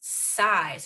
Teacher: the word is not zai the word is size we have to pay close attention to that voicing there